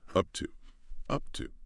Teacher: the P and up can be a soft stop. And to is often reduced to that t sound.